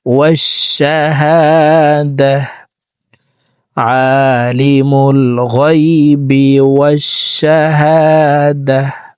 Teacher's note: ওয়াকফের ক্ষেত্রে হার উচ্চারণ করব এবং হাকে সাকিন করে ফেলবো।